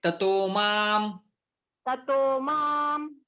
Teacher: संधि होके विसर्ग का ऊ बनेगा और फिर वो ओ बन जाता है।